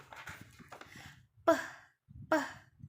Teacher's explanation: Ya, cara membacanya yaitu p, peh. Nah, peh ini dihasilkan tanpa getaran pita suara yang tak bersuara · bibir atas juga bibir bawah ini saling menutup atau mendekat, ya, kontak ke antara keduanya ini akan menghambat aliran udara sehingga menghasilkan atau membentuk bunyi-bunyi konsonan. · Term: konsonan bilabial